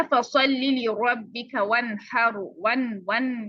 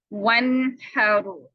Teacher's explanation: अब यहाँ पे हा है, तो नून साकिना के बाद हा आ जाए, वस्ते हल्क से निकलता है ये हा, तो इसलिए हम यहाँ पर इजहार कर देंगे वन हैरो।